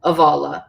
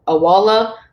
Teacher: be be when it's near a broad vowel will be uh most of the time I hear it as a V especially in Munster but other dialects it can be a W sound